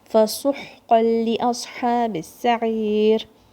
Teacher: No noon sound. Noon sound will disappear and it will join with the lam.